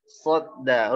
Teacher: Ada di ujung lidah berhadapan-hadapan dengan gigi seri bawah, dikasih jarak. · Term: huruf sod